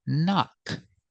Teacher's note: the first K is silent. So we start with the N sound